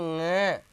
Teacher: नाक से, नाक से बोलेगा, ये न और ग से मिलकर नहीं बना है, मैं उच्चारण के हिसाब से बोल रहा हूं।